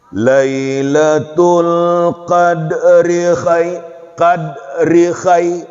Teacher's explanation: langsung, nggak boleh tertahan pada ri-nya itu